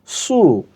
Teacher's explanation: সদ পেশ সু, গোল করে মোটা করে সু